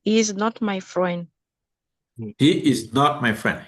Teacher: So you see that the intonation falls for a declarative sentence in English, always.